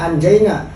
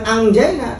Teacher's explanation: sudah persiapan di tengah lidah karena jim posisinya di syajriyah di lidah